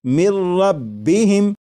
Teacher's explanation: لکھا ہوا ہے من، لیکن جب نون ساکن کو را میں ملا کر پڑھیں گے تو پھر نون ساکن کی آواز نہیں آئے گی، بلکہ میم کے بعد را کی آواز آئے گی، اور یہاں پر غنہ نہیں کریں گے اور اسے پڑھیں گے مر ربہم۔ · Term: ادغام